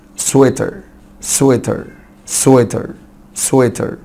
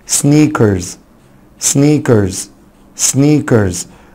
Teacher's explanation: الاي اي في كلمة سويتر نطقت شورت اي عادي جدا، انما هنا لونج اي